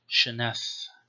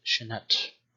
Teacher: probably already spirantized as Shenath and not Shenat